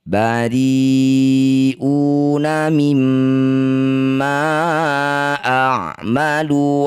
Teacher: Mad thabi'i bertemu dengan hamzah di satu kata disebut bacaan mad wajib muttasil. Ri wajib dipanjangkan enam harakat.